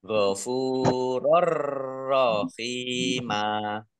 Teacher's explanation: Masuk dengan tidak mendengung. Maksudnya langsung masuk ke huruf ro. Fathah tanwinnya tidak dibaca. Ditambahi ro-nya ada tasdidnya. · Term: idgham bila gunnah